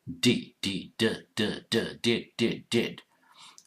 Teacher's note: The tongue position is different in English than many other languages. The tongue touches just behind the front upper teeth onto the gum and gently say D. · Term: D sound